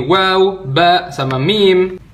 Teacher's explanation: yang terakhir 2 buah bibir ketemu